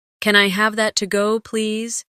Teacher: When you say to go, your voice should rise slightly. It makes the question sound polite and clear. · Can I have that to go, please? When you say to go, your voice should rise slightly.